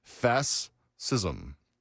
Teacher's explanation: She's saying both of the s sounds separately.